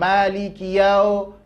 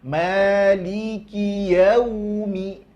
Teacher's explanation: Kemudian waw itu monyongkan wawnya biar enggak ke huruf o perginya. Jangan maliki yau, tapi maliki yaumi, gitu. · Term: harful lin